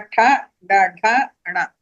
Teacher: మన నాలుక చివర కొద్దిగా వెనక్కి మడుచుకుని ఆ పైన ఉన్నటువంటి ఆ హార్డ్ భాగాన్ని తాకుతుంది. అందుకని వీటికి మూర్ధన్యములు అని చెప్పి పేరు.